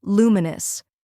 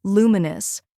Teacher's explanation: First, we have lu, which rhymes with you and is stressed.